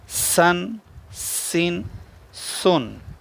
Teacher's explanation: سین کو سیٹی کے ساتھ پڑھنا ہے۔